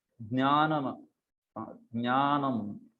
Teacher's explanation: जकार होता है और फिर न्यकार होता है, ये दोनों मिलके बनता है ज्ञा, ये वाला साउंड